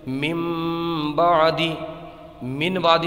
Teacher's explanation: نون ساکن یا تنوین کے بعد حرف با آ جائے تو اقلاب ہوتا ہے، یعنی نون ساکن کو میم سے بدل کر پڑھتے ہیں